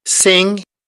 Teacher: we have a nasal sound, and then we have a stop